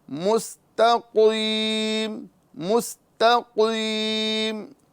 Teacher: اہدنا الصراط المستقیم، یہاں سین ادا کرنا ہے، صاد نہیں. مستقیم، تا باریک اور قوف کو پر کرنا ہے